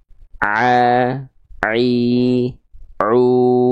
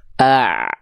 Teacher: Nah, Ain dilafalkan dari sini. Tepat dari bagian katup epiglotis yang menyempit ke arah dinding tenggorokan ketika dilafalkan. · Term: huruf Ain